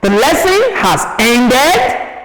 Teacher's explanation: Because of the rising tone, it becomes what? A question.